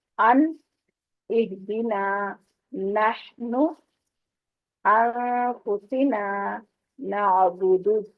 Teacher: زبان کی آپ کی جو سامنے والا حصہ ہے وہ سامنے والے دانتوں کو ٹچ کر رہا ہے، اس سے پھر ادا کی ہو رہی ہے. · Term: نون کی آواز